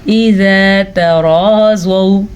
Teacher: تا باریک، را پر، پھر زوا بھی پر اور یہ واو لین ہے